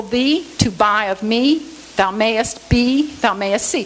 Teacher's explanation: Okay, now the same verse, I counsel thee to buy of me, thou mayest be, thou mayest see. Four syllables and the accents alternate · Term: stress-timed rhythms